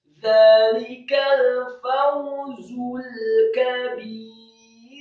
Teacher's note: Kata al-kabir, kafnya fathah 1 harokat tipis, kemudian baknya kasrah 2 harokat karena setelahnya ada ya sukun, kemudian huruf ro yang sukun dibaca tipis